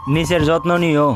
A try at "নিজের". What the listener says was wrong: নিচের না নিজের। নিচের না নিজের।